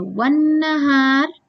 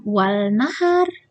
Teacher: Di sana ada alif lam tetapi lamnya tidak dilafalkan. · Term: alif lam syamsiyah